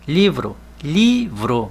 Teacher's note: Olha como nós falamos mais alto a sílaba li. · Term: sílaba tônica